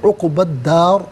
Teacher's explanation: وقف کی صورت میں را ساکن کو پر کر کے پڑھیں گے۔ عقبہ الداری، یہاں وقف پڑھیں گے تو عقبہ الدار پڑھا جائے گا۔